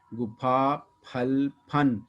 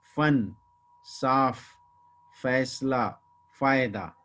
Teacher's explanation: तो फा को बोलते समय दोनों होंठ मिलते हैं, फ, जबकि फ को बोलते समय ऊपर के दांत और नीचे के होंठ आपस में मिलते हैं